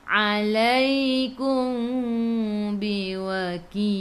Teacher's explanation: Mim bertemu dengan ba, ikhfa syafawi dengan 2 harakat. Nak rapatkan bibir boleh, jangan tekan.